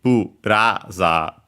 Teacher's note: low, high, and then everything else low